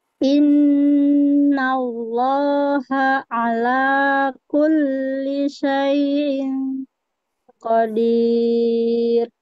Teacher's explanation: karena depannya qaf, qaf itu adalah huruf tebal, maka ing-nya ditebalkan juga.